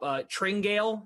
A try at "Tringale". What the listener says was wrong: close. Close. You pronounce the E, so Tringale.